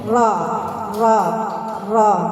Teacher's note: Ro itu dari mana makrotnya? Dari ujung lidah menyentuh langit-langit atas yang depan.